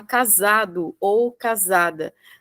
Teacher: quando você fala casado ou casada, né? Você falando, você já escuta o som de Z